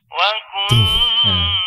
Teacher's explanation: Nun bertasydid hukumnya gunnah. Tuh. Yaitu menahan bunyi huruf nun bertasydid seukuran 2 harokat.